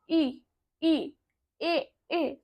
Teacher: जिन स्वरों के उच्चारण में जीभ के आगे का हिस्सा उठता है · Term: अग्र स्वर